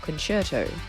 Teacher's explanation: we have the word concerto, where the C becomes more of a ch sound